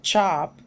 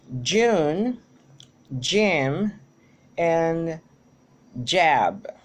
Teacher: We have in ch that is a voiceless consonant, while j is a voiced one. In the manner of articulation, both are affricate, which means that they use a combination of plosive and fricative to be created.